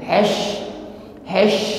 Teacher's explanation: maka nampak sifat tafasi intisyari menyebarnya angin di dalam mulut kita